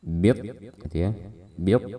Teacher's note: Kemudian bit, nah ini ada alif lam, kemudian huruf setelahnya setelah lam bertasydid seperti yang sudah kami sebutkan. Ini hukumnya alif lam syamsiyah, kita tidak membaca lamnya, jadi dari ba langsung ke to bertasydid